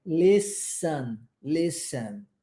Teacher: Reparem na pronúncia da palavra listen. Nós não pronunciamos a letra T, tá? Vai do S para o E.